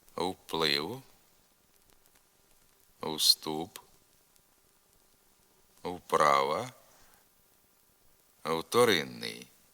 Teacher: на місці початкового правописного в вимовляється нескладовий звук у